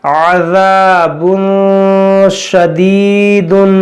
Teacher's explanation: یہاں پر تنوین کے بعد شین حروف اخفا ہے, یہاں پر گننا کریں گے